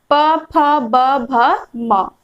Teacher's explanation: कहां से हो रही है, तो ओष्ठ से, है ना। प, फ जब हम बोल रहे हैं तो दोनों होठ है सो आपस में टकरा रहे हैं और हम उच्चारण कर पा रहे हैं